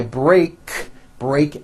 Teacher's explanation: ends with an unvoiced K sound there's no voicing on that K